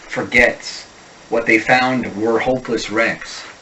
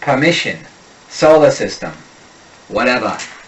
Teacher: a wicked awesome Boston speaker has no use for the unstressed R. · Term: unstressed R drops